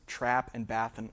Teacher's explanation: So the trap-bath merger is a merger of the vowels in the words trap and bath and words like it, so that those have that same ah sound